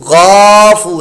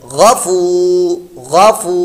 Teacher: غفو غین حروف مستعلیہ میں سے پر موٹا بھی پڑھنا ہے. فا واو پیش فو یہ واو مدہ بن گیا، اس کو لمبا پڑھنا ہے. غفو غافو نہیں، غافو یہ غلط ہے.